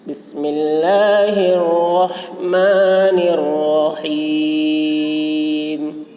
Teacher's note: رحیم کے را کو بھی پر پڑھیں گے اور ہا کو حلق سے ادا کریں گے